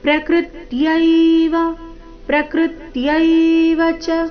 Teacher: ಪ್ರಕೃತ್ಯವ ಶಬ್ದದಲ್ಲಿ ಕೃ ಮೇಲೆ ಆಘಾತ ಬರಬೇಕು